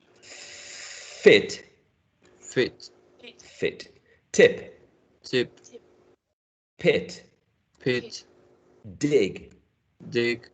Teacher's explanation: Remember, this is short, not long. This is a short vowel sound. And this is lax, it's not tense. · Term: short and lax